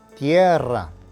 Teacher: Number 1, the word for earth is la tierra. Note that the emphasis is on the E and that the double R needs to be trilled.